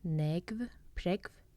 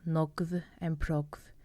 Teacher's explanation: you can say negv and pregv with the short Faroese E